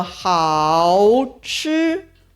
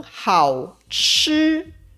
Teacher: 我们通常只发半3声，发到最低的音就停了，而不会再拉回高音